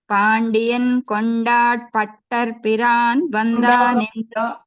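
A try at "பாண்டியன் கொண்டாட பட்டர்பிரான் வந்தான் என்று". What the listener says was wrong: కొండ తర్వాత డా మీరు పూర్తిగా పలకడం లేదు. కొండాడ అనండి. పాండియన్ కొండాడ పట్టర పిరాన్ వందాన్ ఎన్ను.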